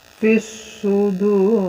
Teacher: Al yang nggak terbaca namanya idgham syamsiyah, al syamsiyah. Jadi langsung masuk ke huruf so.